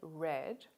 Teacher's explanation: the r sound of australian english as in the word red is made by bringing the tip or blade of the tongue fairly close to the alveolar ridge but not so close as to create a noisy airflow we call this sound a voiced alveolar approximant the symbol for